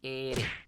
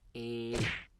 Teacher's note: literalmente solamente hay una percusión o solamente vibra una vez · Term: R suave